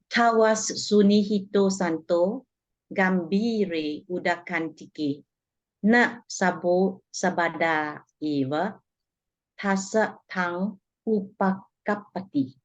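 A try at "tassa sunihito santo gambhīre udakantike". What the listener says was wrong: Yeah, great.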